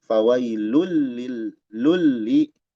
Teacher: Kemudian fawailu lul. Nah ini idgham bi ghairi gunnah. Dileburkan tanpa dengung.